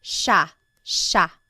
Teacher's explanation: for the most part in the central Luzon Tagalog speaking areas, it's pronounced sha sha